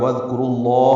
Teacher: وذکرو، را پر ہے، رو واو مدہ ہے۔ را کو لام اسم جلالہ سے ملانا ہے